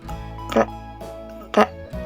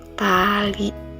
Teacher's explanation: ujung lidah menempel gusi atas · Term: huruf T